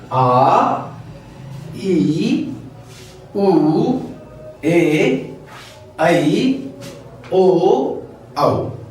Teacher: तो ये इनको बोलने में डबल समय लगता है, दुगुना समय लगता है, इसलिए यह दीर्घ स्वर कहलाते हैं